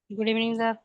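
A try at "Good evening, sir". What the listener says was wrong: ऐसे डांट के बोलेंगे गुड इवनिंग, अच्छा से अच्छा, मैं तो इतना प्यार से आप लोग बोलते हो, आप लोग डांट के बोल रहे हैं।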